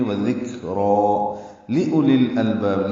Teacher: لی لام زیر لی جلدی سے معروف طریقے سے ادا کرنا ہے. حمزہ کو جلدی پڑھنا ہے، واو نہیں پڑھنی ہے، لکھنے میں آئے گی پڑھنے میں نہیں آئے گی. · ذکر کاف ساکن پہ ہمس ہے، را پر ہے، کھڑا زبر ہے تو 2 حرکات لمبا بھی کریں گے